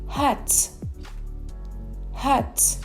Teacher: La consonante H suena como H en inglés. Al principio de sílaba suena parecido a la J española, pero más suave.